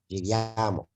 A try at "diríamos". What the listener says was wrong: Diríamos. No i, não no a. Diríamos. No segundo i.